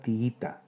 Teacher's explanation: Y finalmente la palabra tiita, 3 sílabas. Hiato entre dos vocales iguales, la I. La sílaba tónica es la penúltima. Se trata de una palabra llana que termina en vocal, por eso no se tilda.